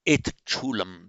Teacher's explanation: Note the sandhi here. Um, a word ending in a t, and the next word beginning in a sh. This t and sh becomes ch, and that's how we have it.